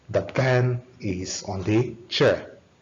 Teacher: The stress here is on the pen and chair, because they are the content words there. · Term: content words are stressed